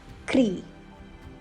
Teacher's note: Kri, like creed without the D, and with a rolling R